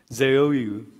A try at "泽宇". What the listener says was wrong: Ze. Yeah, it's like, it's not from the throat, it's from your mouth. Ze. Like your tongue, like on the tip, on top. Ze.